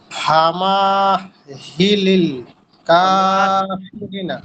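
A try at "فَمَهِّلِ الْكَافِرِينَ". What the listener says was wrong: ফামা টান দেওয়া যাবে না, ফামা।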